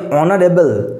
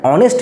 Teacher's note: এখানে কিন্তু এইচ টা সাইলেন্ট রয়েছে এবং উচ্চারণটা কেমন আসছে উচ্চারণটা আসছে ও এর মধ্যে